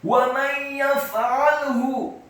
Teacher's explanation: Wa may yaf'alhu, wawunya dibaca fathah satu harokat, kemudian mimnya dibaca fathah satu harokat, nun yang sukun bertemu dengan huruf ya, hukum bacaannya adalah idgham bi gunnah, memasukkan dengan dengung. Wa may yaf'alhu, kata yaf'alhu, ya-nya dibaca tipis fathah satu harokat, kemudian fa-nya dibaca sukun dan tidak boleh dikolkolakan.